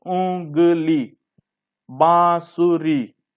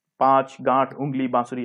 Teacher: अनुनासिक अर्थात चंद्र बिंदु, इसका उच्चारण जो होता है वो नाक और गले से होता है।